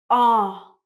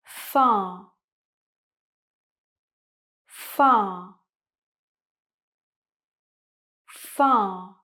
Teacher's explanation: Now, as you can see, when I say ah, my mouth is round, my tongue and my chin are very low, and it's a long sound, it's very deep. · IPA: /ɑː/